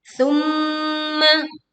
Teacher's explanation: Baca mim bertasydid dengan bunyi dengung yang sempurna.